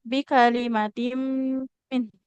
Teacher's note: kalau ada mim bertasdid bikalimatim min ini ditahannya jangan terlalu cepat